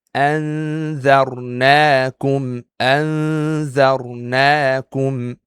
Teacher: It's a light ghunnah because zal is a light letter.